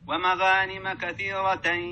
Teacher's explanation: فخم الغين المفتوحة وراها حرف الألف هذا تفخيم من الدرجة الأولى